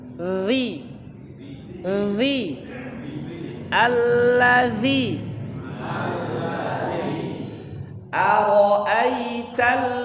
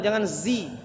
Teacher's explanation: Jadi lidahnya sedikit keluar bergesekan dengan gigi atasnya.